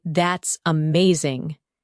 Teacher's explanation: When you say, That's amazing, your tone rises with excitement. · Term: intonation